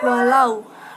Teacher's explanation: Lau itu bacaan madlin, di mana wawu sukun didahului dengan fathah.